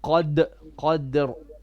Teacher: You have a bit of a fatha on your dal. You said qadar.